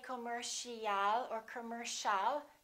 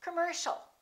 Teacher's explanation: the second syllable is stressed. The O and the IA are both reduced. So it's not com or calm, it's come, come.